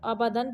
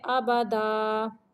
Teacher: اگر یہاں پہ ہم نے رکنا ہے، وقف کرنا ہے، تو ہم پڑھ دیں گے آبادا۔ دو زبر کی تنوین کو الف میں بدل دیتے ہیں، یعنی منہ کھول دیتے ہیں، آبادا۔ جہاں پہ بھی دو زبر آ جائے گی تو منہ کو ہم کھول دیں گے، وقف کی صورت میں، یعنی رکنے کی صورت میں۔